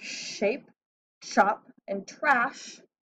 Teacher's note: I'm going to circle chop because it doesn't have an sh sound like shape and trash do it has a t sound